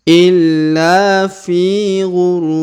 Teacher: huruf Fi kita panjangkan dua harakat karena di depan huruf Fi terdapat Ya Sukun